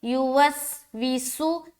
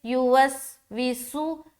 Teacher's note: سین میں سیٹی کی آواز ظاہر کرے